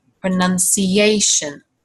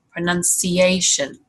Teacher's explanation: So, for example, if we take the word pronunciation, it's not pronunciation, but it's actually pronounced like this, pronunciation. You can hear that intrusive y sound again